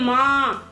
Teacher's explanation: ये नाक और मुंह से बोली जाने वाली ध्वनि है। जैसे माँ, तो नाक और मुंह दोनों से निकलती है इसकी ध्वनि। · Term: चंद्र बिंदु